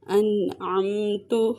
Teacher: انعمت، ان یہاں پہ اظہار کا قاعدہ ہو رہا ہے، عمت یہاں پہ اظہار شفوی ہو رہا ہے، نون پہ بھی غنہ نہیں ہوگا اور میم پہ بھی غنہ نہیں ہوگا، انہیں بغیر غنہ کے ادا کریں گے